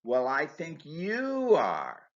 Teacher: Notice that stressing you in the response emphasizes the disagreement between A and B.